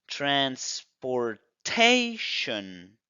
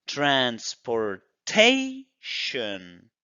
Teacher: Pero no, la regla nos dice que es transportation. Tenemos el apóstrofe antes de tation, por lo tanto esa zona se va a pronunciar fuerte.